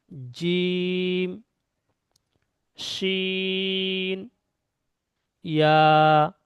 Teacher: পুরো জিভের মাঝখানটা উপরের সঙ্গে উঠবে, জিম, শিন, ইয়া।